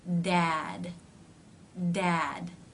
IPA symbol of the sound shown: d